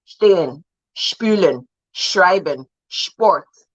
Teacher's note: Once a consonant follows that S, it changes. It becomes SH. So you pronounce it like you're saying she, sh, stehen, spülen, schreiben, sport.